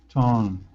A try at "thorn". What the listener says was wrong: Thorn. Not torn. You're forgetting the th sound.